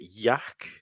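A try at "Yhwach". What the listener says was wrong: I just say Yacht. It's like Yacht, like a T at the end. It's German.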